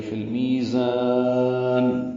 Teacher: فا کو لام سے ملائیں گے، اظہار قمری ہوگا. می یا مدہ ہے، اور زا کو ہم لمبا کر دیں گے، وقفاً مد عارض سکون بناتے ہوئے زیادہ لمبا کریں گے.